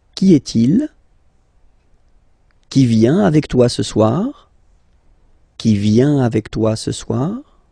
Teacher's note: If you pronounce them normally, remember that you will have to raise your voice a little bit at the end of the question.